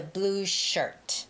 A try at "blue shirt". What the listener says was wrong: It's always blue shirt, not shirts, okay? Koreans and Japanese, we say that. Shut sue. Shut sue. But it's shirt. It's It ends with a T.